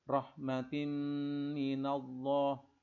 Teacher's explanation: Allah ini adalah tafkhim karena sebelumnya berharkat fathah.